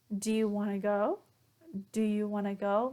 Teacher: my pitch is going up at the end when I'm asking a question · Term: intonation, rising pitch